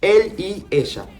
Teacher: In Spanish or from Argentina, we say the sh as Y with show. So the Y and double L in Argentina, we pronounce it as sh sound.